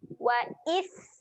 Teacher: huruf sin. Ketika mati, kita kena keluarkan angin.